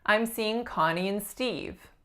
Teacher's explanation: instead of and I'm saying what's called a syllabic n basically it's schwa N